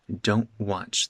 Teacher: That T becomes a glottal stop.